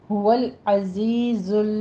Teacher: زے کی سیٹی کی آواز لے کر آگے یہ مد ادا کرنی ہے، اور دوسری زے کی آواز لام کے ساتھ ٹچ کرنی ہے، تو لام پہ قلقلہ نہیں کرنا۔